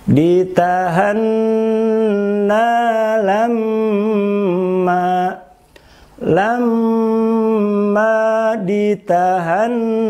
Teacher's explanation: gunnah itu bacaan dengung yang terbentuk dari huruf mim dan nun, keluar dari rongga hidung, kemudian lama dengungan yaitu 2 harokat. · Dalam tajwid lamanya seukuran dengan kadar harokatain, yaitu seukuran membaca dengan kadar 2 harokat. Itu lamanya gunnah.